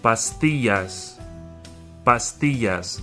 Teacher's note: The double L has the Y sound.